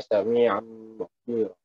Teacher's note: Jadi nun dan tanwin tidak dibaca langsung masuk ke bacaan itu ke huruf mim dan didengungkan.